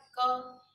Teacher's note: स्पर्श व्यंजन जिनके उच्चारण में हमारे मुंह में, जैसे बोले हमने बोला क, ये कंठ से आवाज, हमारे कंठ से आवाज आती है।